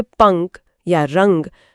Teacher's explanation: जब हम अनुस्वार बोलते हैं जैसे पंख या रंग तो हवा मुख्य रूप से नाक से बाहर निकलती है।